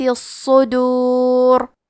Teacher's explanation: صاد حروف التفخیم میں سے ہے، تو ہم یہ حرف کو موٹی آواز میں پڑھیں گے، اور کیونکہ اس پہ تشدید ہے تو ہمیں 2 حرف کے برابر صاد کو پڑھنا ہے. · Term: حرف الصاد